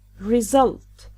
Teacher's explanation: The stress is always on the second syllable for a noun and a verb.